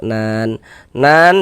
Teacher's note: dibaca panjang ini namanya adalah mad arid li sukun namun pada awalnya namanya mad thobi'i.